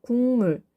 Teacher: 뒷말 첫 소리가 미음이 오고 앞말 받침이 기역이니까 이 기역이 비음화가 발생해서 궁이 된 거예요